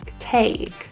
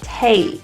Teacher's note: If you can hear that A sound, there's a little E position in there that we don't want to lose. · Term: diphthong vowel